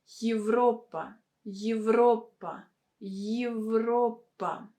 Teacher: here we don't have a stress on a vowel yet that is why it should be pronounced as yi